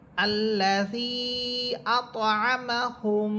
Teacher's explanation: আল্লাযী আত'আমাহুম, হুম শব্দে গুন্না হবে। এই গুন্না হওয়ার কারণ হচ্ছে যে আমরা গুন্নার যে 3য় প্রকারটা পড়েছিলাম সেটা ছিল মিম সাকিন।